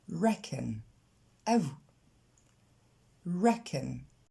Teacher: l'accent tonique tombe sur la première syllabe